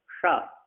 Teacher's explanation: जो गड्ढे में जीभ ले जाएंगे तो वो मूर्धन सकार कहलाएगा